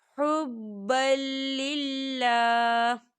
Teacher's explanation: وقف کی صورت میں ہا جو ہے وہ ساکن ہو جائے گا اور اللہ کا نام باریک پڑھا جائے گا، کیونکہ اللہ کے نام سے پہلے زیر ہے، تو اس چیز کا آپ نے خیال رکھنا ہے.